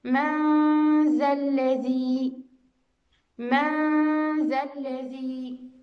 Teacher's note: إذا مع الحرف المستفيل، من ذا الذي، من، إذا النون الساكنة بعدها حرف الذال، الغنة ستكون مستفيلة لأنه حرف مستفيل.